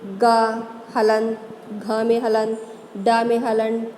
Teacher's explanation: इन व्यंजनों के उच्चारण में स्वर तंत्रियों की गूंज मुख से निकलने वाली वायु में शामिल हो जाती है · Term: घोष व्यंजन